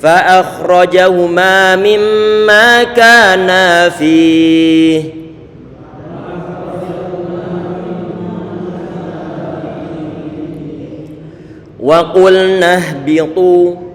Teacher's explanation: lafaz wa qulna berarti kita monyongkan pengucapan huruf qaf yang didomahkan